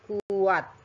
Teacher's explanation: ini bunyi tidak tertulis huruf W-nya, tetapi dibaca dengan adanya bunyi W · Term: semi-vowel